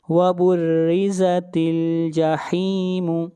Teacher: را کو بریک پڑھیں گے، را کے نیچے زیر ہے